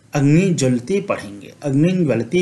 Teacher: यहाँ पर अनुस्वार का उच्चारण जो हो जाएगा ञ के अनुसार हो जाएगा